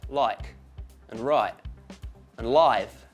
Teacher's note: for Australians this becomes a little bit like I in oil